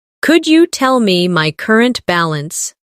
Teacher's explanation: Could you becomes could ya in faster conversation